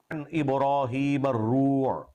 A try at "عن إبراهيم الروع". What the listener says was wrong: نہیں بیٹے، روع نہیں ہے، را کے اوپر پیش ہے ہی نہیں تو آپ کیوں پڑھتے ہیں؟ عن ابراہیم الروع، ہجے پھر سنیں، را زبر و رو، رو، رو نہیں بیٹے، رو نہیں، رو، رو، را زبر و رو. عن ابراہیم الروع، عین پیش عو، الروع، عن ابراہیم الروع.